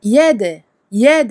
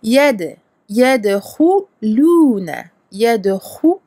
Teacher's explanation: Donc le del, qalqala. On fait jongler le del en ne le gonflant pas. Le del reste une lettre amincie, mais on fait jongler, on fait rebondir.